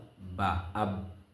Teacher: বার মিম উভয় টুট মিলাইয়া উচ্চারিত হয়